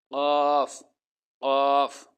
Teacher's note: জিহ্বার গোড়া তার বরাবর উপরের তালুর সঙ্গে লাগাইয়া, একটি হরফ উচ্চারিত হয়, 2 নোক্তাওয়ালা কফ, কফ, কফ।